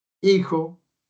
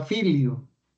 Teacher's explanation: Y entonces miramos que ahí en la fonética, pues por ejemplo, había el sonido de la f y la I. Y en la evolución pues ya esa f pasó a ser H, por lo tanto en el español a no tener sonido